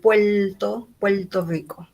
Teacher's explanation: el dialecto caribeño donde la r se pronuncia como l al final de la sílaba